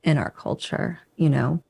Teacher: she reduces our to or and stresses on the next word culture the C in culture is also aspirated culture you know another